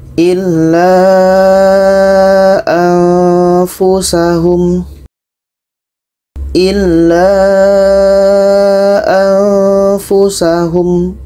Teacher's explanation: Dan di sini ada nun mati bertemu fa, bermakna nun mati bertemu fa ini adalah hukumnya dengung.